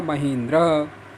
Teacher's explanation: ई बड़ी दीर्घ और ई ह्रस्व, दीर्घ और ह्रस्व मिल करके दीर्घ हुआ